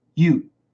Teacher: That's a long U, not a diphthong.